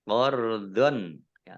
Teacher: fathah tanwin bertemu dengan huruf kha, bacaan izhar, dibaca jelas